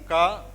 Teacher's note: So you say ka, and this is not vibrating. It vibrates a little bit because of the e, right?